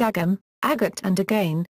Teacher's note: There is also a tendency to omit the g sound in words such as agam, agat and again, a characteristic also of other Connacht dialects.